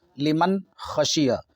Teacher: نار حامیۃ، لمن خشی، لمن خشی، یہ جو نون ہے یہ نون ساکن ہے، یہ نون ساکن ہے۔ نون ساکن کے بعد یہاں حروف حلقی کا خا آ رہا ہے، جس کی وجہ سے یہ نون بالکل صاف صاف پڑھائے گا، لمن خشی۔ ہاں اتنا ضرور دھیان رکھیں کہ نون میں آواز نہیں لوٹتی ہے، نون میں آواز نہیں لوٹتی ہے، لمن خشیہ نہیں کہیں گے، لمن خشیہ، لمن خشیہ۔